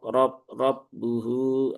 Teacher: Ah, tidak monyong ya. Monyong hanya untuk harakat dommah. Fathah dia tidak monyong.